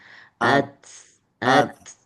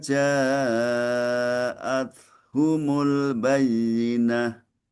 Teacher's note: ada desis yang keluar sedikit dihembus ketika ta sukun diucapkan at. Nah, ada ada sedikit apa desis yang di di di didorong jaat humul bayyinah.